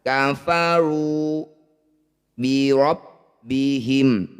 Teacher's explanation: Ro fathah atau ro dhammah, dua-duanya harus dibaca tafkhim atau tebal. Caranya ro ini jangan terlalu banyak getaran. Angkat ujung lidah sampai menempel di langit-langit lisan.